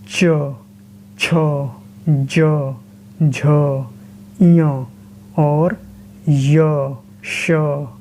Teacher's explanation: कंठ व्यंजन में जीभ का पिछला हिस्सा तालु को स्पर्श करता है और तालव्य व्यंजन में जो आगे जीभ के आगे का भाग तालु को स्पर्श करता है, तब जो ध्वनियाँ उत्पन्न होती हैं वो तालव्य व्यंजन या तालव्य ध्वनियाँ कहलाती हैं।